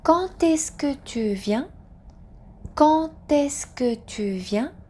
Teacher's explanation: So D sound becomes T sound. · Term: liaison